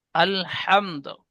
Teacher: আলহামদ, এখানে হরফে মাদের পরে মিমের উপরে থেমেছি, তাই মধ্যে আরিজ ওয়াকফি হয়েছে, এখানে কিন্তু আরিজ ওয়াকফি আর হবে না, আলহামদ, দাল কলকলা হবে। দালের উপরে পেশ আছে, এখানে থামবো, তাই পেশকে বাদ দিয়ে সাকিন ধরে আগের অক্ষরের সাথে কলকলা করে পড়বো